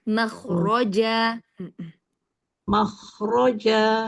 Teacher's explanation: Jadi tidak mah ya, tapi agak sedikit angkat pangkal lidahnya. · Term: isti'lanya